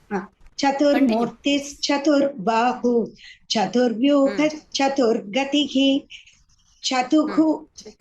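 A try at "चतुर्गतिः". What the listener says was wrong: No, let us not speak Chatuhu. Chaturgatihi, you don't have the Chutva Sandhi there. Chaturgatihi.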